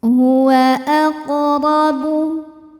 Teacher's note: Huruf ra dibunyikan secara tafkhim, sebab ra berbaris di atas yaitu baris fathah. Maka cara bacanya ditebalkan.